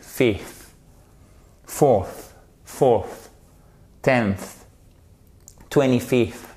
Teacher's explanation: l'air qui passe entre votre langue et les dents du haut, ça va provoquer un léger sifflement et ce qui nous fait notre soft TH et ce qui vous permet de prononcer le TH ici.